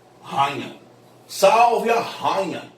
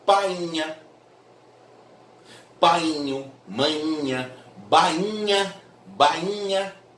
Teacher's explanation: Esse NH é tão nasal, ele é tão nasal, que obriga o I a ficar tônico. Ele é tão anasalizado, nasal, que obriga o I a ficar tônico.